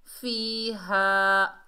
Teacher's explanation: हा के ऊपर ज़बर, आगे अलिफ खाली है, ये अलिफ मद्दा है, एक अलिफ की मिकदार खींच कर पढ़ेंगे, हा को भारी साउंड से अदा करेंगे।